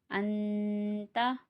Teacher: नून साकिन के बाद इख्फा है, इसलिए नून साकिन पे गुन्ना होगा